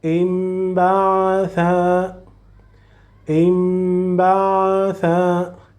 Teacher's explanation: please don't pronounce noon but pronounce mim. So you will start directly from the first letter to the letter mim, non to the letter noon. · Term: convert the sound